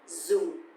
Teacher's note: because the tone mark here is dấu huyền, so it's going to be down a little bit.